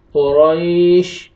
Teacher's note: وقف کی صورت میں آیت کمپلیٹ ہو رہی ہے، آپ نے شین کو ساکن کرنا ہے تو اوپر سکون آ جائے گا۔